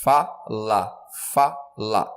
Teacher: O mais forte é o fá. Eu posso falar que esse fá é um acento tônico.